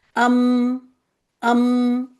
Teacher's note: دونوں ہونٹوں کے خشک حصے ملنے سے میم ادا ہوتا ہے